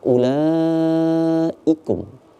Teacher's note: Agak panjang. Itu 4 sampai 5 harokat dibacanya. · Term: mad wajib